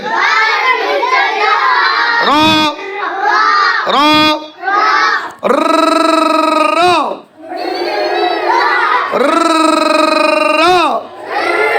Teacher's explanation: জিব্বার আগার পিঠ তার বরাবর উপরের তালুর সঙ্গে লাগিয়ে র হরফটি উচ্চারিত হয়। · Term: 10 নম্বর মাখরাজ